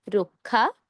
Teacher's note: অধ্বনি এর পর ক্ষীয় আছে। অধ্বনি এর পর ক্ষীয় থাকার কারণে ক্ষীয় এর আগে র এর সাথে আমরা ওকার দিয়ে উচ্চারণ করব